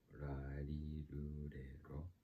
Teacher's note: Japanese R sound is actually very different from English R. It's a little more faint. It's when I pronounce it, it feels like in between an R and an L. · You don't roll the R's in Japanese. Japanese R sound is actually very different from English R.